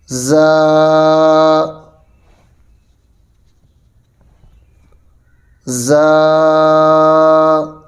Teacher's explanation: جب یہ حروف ادا ہوتے ہیں تو یہ حروف سیٹی کے ساتھ ادا ہوتے ہیں، اسی وجہ سے ان حروف کو حروف صفیریہ کہا جاتا ہے۔